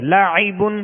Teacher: عین وسط حلق سے یعنی درمیان حلق سے ادا ہوتی